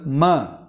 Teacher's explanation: இந்த ம என்ற எழுத்தும் உதடுகள் இரண்டும் இணைகின்றன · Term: ஓஸ்டஜ